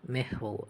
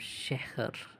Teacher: In the words mahal and sahar, shahar, the ha has the effect of enlightening the adjacent vowel, lightening the adjacent vowel, making them sound more like a in mend than u in mundane